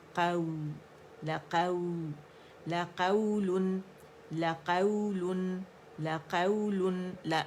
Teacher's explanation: نرمی کے ساتھ، ایک کاؤنٹ کے لیے قاف پہ فتحہ آواز اوپر جائے گی ، واو کے ساتھ میں سے نرمی سے ملائیں گے، قو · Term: واولین